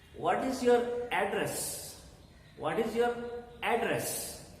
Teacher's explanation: you give emphasis on the sound of the first syllable